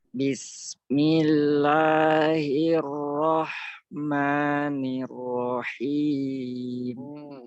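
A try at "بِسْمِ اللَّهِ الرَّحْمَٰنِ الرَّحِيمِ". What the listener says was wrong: Lamnya sedikit tebal lagi. Bismillah, jangan millah.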